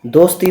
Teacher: स छोटी आवाज़ है, दो बड़ी आवाज़ है, ती बड़ी आवाज़ है, और स बीच में है तो एक इसकी आवाज़ हो जाएगी।